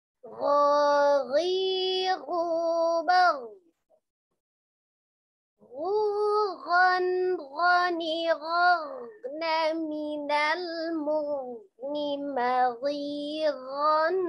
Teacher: huruf ghin keluar dari tenggorokan bagian atas